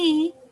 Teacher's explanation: disebut vokal tinggi dengan vokal depan artinya ah lidah itu pada posisi yang tinggi tetapi depan